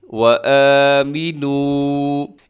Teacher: اس میں واو مدہ ہے، تھوڑا سا آپ نے لمبا کرنا ہے